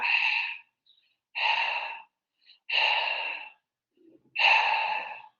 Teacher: Ese sonido, que en términos de la fonética sería el glotal fricativo sordo, es un sonido glotal porque solamente estamos dejando salir el aire desde las cuerdas vocales